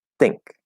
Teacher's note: just the basic idea voiceless is going to match voiceless so if you're doing a voiceless th the alternative way to do that would be a dental t